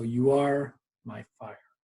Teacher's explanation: we're hearing fire more it's going to be stressed a little bit more